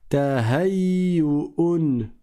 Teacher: Distinguez bien hein, entre cette lettre qui est la hamza et cette lettre qui est le ha, parce que les deux lettres sont proches du point de vue de leur point de sortie, leur point de prononciation.